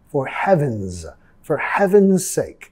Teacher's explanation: for heaven's, la S vamos a pronunciar como una Z.